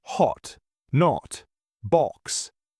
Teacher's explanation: In British English, it's more rounded.